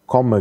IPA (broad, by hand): ˈkomə